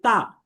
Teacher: জিহবার আগা এইযে সামনের উপর দুই দাতের গোড়ার সাথে লাগিয়ে উচ্চারিত হবে তা